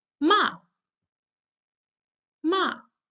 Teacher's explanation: the fourth tone which is high but you drop sharply to the bottom